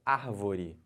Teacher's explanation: A antepenúltima sílaba é a mais forte, então essa palavra é chamada de palavra proparoxítona.